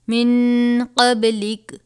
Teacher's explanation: اب من میں یہاں پر نون ساکن کے بعد حروف اخفا میں سے قاف آیا ہے، غنہ کر کے پڑھیں گے